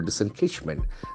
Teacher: The accent falls on the third syllable